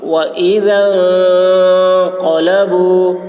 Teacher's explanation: ذال کی آواز باریک ہوگی اور نون میں اخفا. وَإِذَا انقَلَبُوا قاف کی آواز موٹی ہوگی، با کو کھینچیں گے مد ہے اس میں.